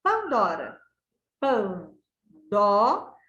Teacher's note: A sílaba dó da palavra Pandora, ela é mais forte ao ser pronunciada. Pandora. O dó é a sílaba tônica.